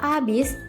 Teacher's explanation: kesalahan tersebut disebabkan penghilangan bunyi konsonan H pada kata abis setelah diperbaiki, kata abis diganti menjadi habis.